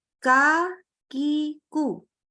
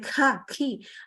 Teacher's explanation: Maka ketika sedang berharokat fathah, dhammah, kasroh, sifat hamsnya itu nggak terlalu terdengar. Terdengarnya cuma pas sukun aja.